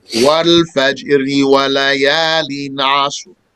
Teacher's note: the ra will be light if it's recited connected to the next ayah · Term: light ra